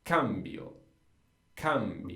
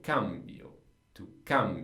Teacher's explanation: Just the a is where the stress goes.